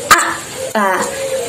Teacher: Ini tandanya huruf hamzah itu memiliki sifat syiddah atau suaranya tertahan ya ketika kita mengucapkan huruf hamzah.